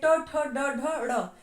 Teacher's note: ट, ठ, ड, ढ, ड़ इन 5 के उच्चारण स्थान भी होंगे मूर्धा